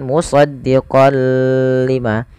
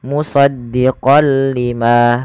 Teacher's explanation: Idgham artinya memasukkan bila gunah tanpa disertai dengan gunah. Jadi kita hanya memasukkan saja tanwinnya kepada huruf lam dan tidak ditahan. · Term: idgham bila ghunah